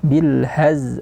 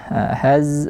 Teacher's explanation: Sofir itu bunyi yang tajam di huruf zai, dan makhrajnya juga berbeda. Zai di belakang gigi dia posisinya. Kalau zal dia terkena ujung lidah dengan ujung gigi seri atas.